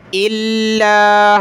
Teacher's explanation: حمزہ کو لام کے ساتھ ملائیں گے، لام کے اوپر تشدید سختی کے ساتھ پڑھیں گے